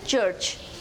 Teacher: Now the seventh consonant is the Ch, as in church. It is described as a voiceless palato-alveolar affricate consonant.